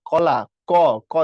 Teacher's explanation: আমি যখন বলি হচ্ছে কলা, ক, ক দেখো পেছনে কণ্ঠধ্বনিতে চলে গেছে।